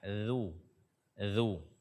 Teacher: makhraj ujung lidah bersentuhan dengan ujung gigi seri atas kita